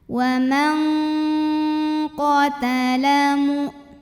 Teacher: bunyi nunnya samar-samar, siap-siap menuju huruf qaf disertai bunyi dengung. Dan ini dengungnya besar, suara dari hidungnya besar ya. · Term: ikhfa ab'ad